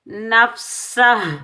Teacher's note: ہا کو ہم وقف میں ساکن ادا کریں گے